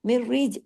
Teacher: जीम को हमने खींचा है कैसे अलिफ की वजह से मिररी लेकिन रा को बारीक रखना है क्यों ज़ेर की वजह